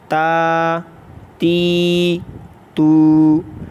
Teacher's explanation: تو سبق نمبر 8 کو بھی کھڑی حرکات جس کو کہتے ہیں کھڑی حرکات، تو کھڑی حرکات حروف مدہ کے قائم مقام ہے، حروف مدہ ہی کی طرح ہے، تو اس کو بھی 1 الف یعنی 2 حرکات کے برابر کھینچ کر پڑھیں گے